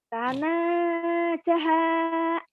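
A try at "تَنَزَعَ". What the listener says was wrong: Itu ain ya Bu ya. Bukan ha ya Bu. Tanaza'a.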